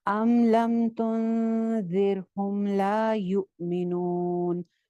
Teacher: میم کی آواز پہ میں غنہ نہیں کر رہی